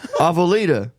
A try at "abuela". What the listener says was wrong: You're added words and letters. It was just abuela.